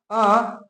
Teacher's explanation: अ एक ऐसा स्वर है जो मध्य स्वर के अंतर्गत आता है यानी जिसके उच्चारण करने से आपका जो जीभ का मध्य भाग कार्य करता है